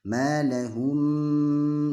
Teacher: tata cara membacanya adalah dengan merapatkan kedua bibir, kemudian didengungkan, karena ada sifat dengung di sana. Jadi tidak boleh terburu-buru sehingga nanti hilang sifat dengungnya, maka akan terjadi kesalahan. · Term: Ikhfa syafawi